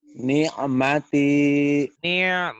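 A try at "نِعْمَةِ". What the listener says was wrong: Tuh nggak bisa kan ainnya kan. Kebiasaan orang kalau bilang nikmat kan nikmat. Padahal nikmat ya. Dengan ain bukan dengan ka. Ni'mati.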